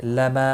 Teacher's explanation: ما الف مدہ ہے، ایک الف کے برابر کھینچ کر پڑھیں گے